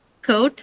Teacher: The first one is coat, which contains a diphthong O